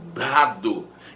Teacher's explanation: A consoante D é linguodental, a língua encosta o pezinho do dente em dado.